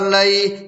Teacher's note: اور یالین کو نرم آواز کے ساتھ معروف پڑھیں اور جلد پڑھیں